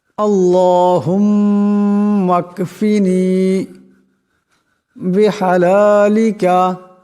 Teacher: ধ্যান দিয়ে শুনেন এবং শিখেন আল্লাহুম্ম এখানে মিম যে মুসাদ্দাদ আছে এখানে মিম মুশাদ্দাদের এক আলিফ পরিমাণ গুন্না হবে